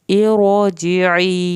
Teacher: अब ये और ऐसा आ रहा है जो कि इस लफ्ज़ को इरोजिई पढ़ा जाएगा, इरोजिई, लेकिन इस रा को पुर करके पढ़ना है पीछे ज़ेर होने के बावजूद भी